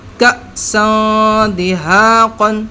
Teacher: یہاں پر جزم لگی ہے تو یہ پہلے والے حرف میں مل رہا ہے، اس کو ہمیشہ جھٹکا دے کر پڑھتے ہیں. حمزہ ساکن کو ہمیشہ جھٹکا دے کر پڑھتے ہیں، لہٰذا ہم نے اس کو جھٹکا دے کے بولا ہے